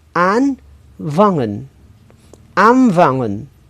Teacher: jika bunyi n bertemu dengan bunyi Fe V maka bunyi n berubah menjadi Bunyi m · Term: asimilasi